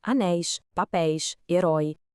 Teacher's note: O assento continua lá bonitinho, marcando o som aberto dos ditongos